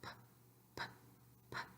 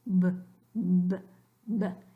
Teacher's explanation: So both of these are bilabial. Both are occlusive, but in one, your vocal cords don't vibrate. That's the P